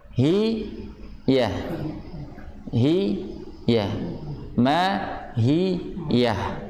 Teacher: Jadi saat haknya berbunyi, si lidah yang tengah, si lidah itu ketika kasrah tengahnya sedikit naik, hi. Sedangkan yang bagian tengah lidah itu milik huruf ya, milik huruf ya, makhrajnya tempat ya. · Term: huruf H